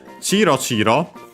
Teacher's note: The accent, by the way, of Chiro Chiro, the accent on the first mora